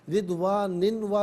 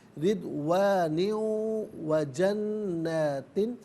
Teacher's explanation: رضوان میں نون کے نیچے دو زیر کی تنوین ہے، اس تنوین کو واو کے ساتھ ملا کر واو کی آواز کو غنے کے ساتھ ادا کریں گے، یہاں پر یرملون کا قاعدہ اپلائی کیا جائے گا۔